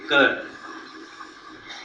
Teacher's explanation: When you say k, when you say k, when you say g, when you say kh, it is only the back part of the tongue which touches the upper portion